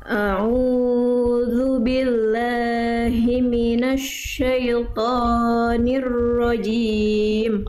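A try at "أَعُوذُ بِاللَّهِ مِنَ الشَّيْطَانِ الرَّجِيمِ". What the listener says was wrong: Oke Bunda jangan sampai dipanjang-panjangkan ya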